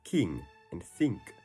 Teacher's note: In standard American English, when I appears before ng, it's pronounced I, like in pick. But in Utah, when I appears before ng, it's always pronounced E, so words like king and think are pronounced king and think.